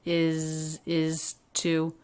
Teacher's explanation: then i hear this is a true t and the ooh vowel not reduced